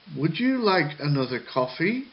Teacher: where the intonation goes up and down up and down up down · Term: rise and fall